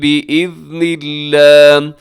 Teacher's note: یہاں لفظ اللہ کو باریک رکھیے گا، اس سے پہلے نون کے نیچے زیر ہے، وقف کر دیجیے گا کیونکہ رموز اوقاف میں سے یہاں طا ہے اور ہا کو ساکن کریں گے وقف کرتے ہوئے.